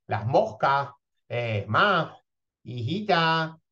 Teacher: la vocal que precede a la S suele abrirse o alargarse un poco · la S implosiva puede tener una realización aspirada H o llegar incluso a su pérdida total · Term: debilitamiento